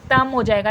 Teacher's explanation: नून की आवाज को या तनवीन की आवाज को मीम में बदल देना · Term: इखलाफ